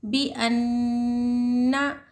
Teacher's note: तशदीद हो तो थोड़ी देर आवाज़ को नाक में छुपाकर गुन्नाह करेंगे